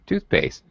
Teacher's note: first word gets primary stress and the second word does not the second word gets what's called secondary stress it is also stressed